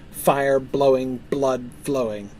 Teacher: Notice how you've got not just the internal rhyme of blowing and flowing, but the transposition of the initial consonants